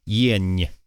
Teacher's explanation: This makes it kind of palatalized, so it goes yeah at the end